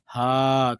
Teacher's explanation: ह को उच्चारण देखो, ह बोले तो हाँ कहाँ से आवाज आ रही है? कंठ से।